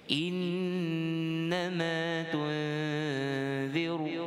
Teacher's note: Yang pertama innama, iaitu wajibul gunnah nun syaddah.